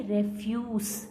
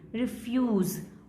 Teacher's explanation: और as a verb इसको हम कैसे बोलेंगे, रिफ्यूज, और एज अ नाउन कैसे बोलेंगे, रेफ्यूज, स और ज, ए और ई, ये इनका डिफरेंस है · एज अ नाउन उनका स्ट्रेस जाएगा फर्स्ट पे, और एज अ वर्ब उनका स्ट्रेस जाएगा सेकंड पे